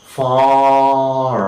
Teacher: the tongue is just lying at the extreme bottom of the oral cavity mouth cavity